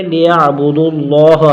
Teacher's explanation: الا لام پر الف مدہ ایک الف کھینچیں گے، لیعبدوا اللہ لام کو موٹا بھی کریں گے، ایک الف کھینچ کر پڑھیں گے۔